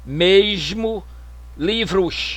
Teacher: área Fluminense no Rio de Janeiro e no Espírito Santo palatalização do S Medial e final